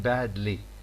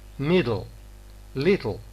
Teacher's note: It is homorganic because it has got the same place of articulation as t. So both the stop and the lateral sound following it have got the same place of articulation. They are homorganic.